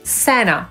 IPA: ˈsænə